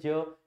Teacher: ज का उच्चारण स्थान क्या है तालू